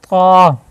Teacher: تا اور دال کا مخرج ہم نے کیا سیکھا تھا وہاں پہ کہ زبان کی جو نوک ہے اوپر والے جو دانت ہیں ان کی جڑ میں لگے تو تب یہ تا اور دال ادا ہوتا ہے۔ اسی طرح زبان کی نوک اوپر والے دانتوں کے جڑ میں لگے تو طا ادا ہوتا ہے